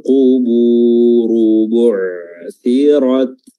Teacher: huruf ra-nya di sini dia tebal isti'la, ya, karena berharakat dhammah.